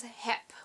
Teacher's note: like a p that's what we do here in the Netherlands we pronounce B's at the end of words like P's